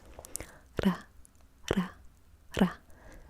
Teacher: This is the case in Korean and Japanese, among other languages, where the tongue very briefly touches the top of your mouth and then retracts. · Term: tapped R